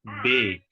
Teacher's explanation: فتحہ آپ نے نہ خالص فتحہ بولنا ہے نہ خالص کسرہ بولنا ہے، بلکہ ان دونوں کے بیچ میں بولنا ہے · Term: امالہ